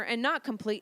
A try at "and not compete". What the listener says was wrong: And not compete. You said not complete.